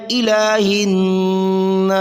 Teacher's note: الہن ہا کو نون سے ملایا، نون مشدد غنہ ضروری ہے